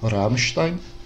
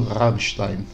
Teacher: ele faz a vibração então na ponta da língua aqui na frente